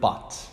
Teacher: vowel so to produce the vowel ah in the word but the tongue is not actually strictly high nor low not front nor back it is actually a lower mid center vowel · it is actually a lower mid center vowel it's mid central but it's a little bit lower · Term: lower mid-central vowel